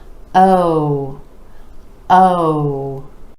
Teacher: For this sound, you want to make sure those lips are really rounding out and stretch the sound. Give it a little more duration